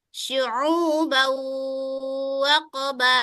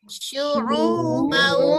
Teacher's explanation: Cara membacanya, memasukkannya dengan dengung. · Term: idgham bi gunnah